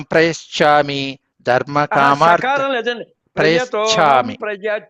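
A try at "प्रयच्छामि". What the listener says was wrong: శకారం లేదు సార్.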